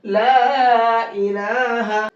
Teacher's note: और मद्दे मुनफसिल को कितना खींचेंगे? 1 से 3 अलिफ की बराबर खींचेंगे।